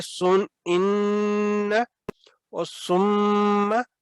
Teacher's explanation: جب نون مشدد اور میم مشدد ہے تو پھر غنہ کی آواز آنی چاہیے 2 سیکنڈ تک۔ تو یہاں پہ پھر ہے سن ان اور سم، تو یہ ہے غنہ کی آواز جو ناک میں آپ کے ان اور سم، یہ 2 سیکنڈ تک ٹھہرانا جو ہے آواز کو گنگنانا، یہ ہے غنہ۔